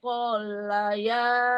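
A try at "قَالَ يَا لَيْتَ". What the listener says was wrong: bukan kol, jangan ditasdid.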